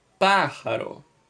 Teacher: O pá é a mais forte, correto? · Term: antepenúltima sílaba tônica